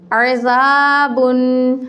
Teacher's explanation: با دو پیش بن، عزابن. اب جب کہ زال کے آگے الف ہے تو یہ الف مدہ کہلائے گا، اس کو ہم ایک الف کی مقدار لمبا کریں گے